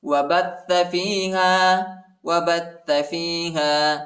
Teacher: با کو تا کے ساتھ ملائیں گے اور تا کو شدت کے ساتھ سختی کے ساتھ پڑھیں گے